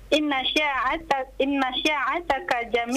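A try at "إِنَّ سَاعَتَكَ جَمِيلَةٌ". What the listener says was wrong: Sinnya perbaiki, sin, sa biasa saja.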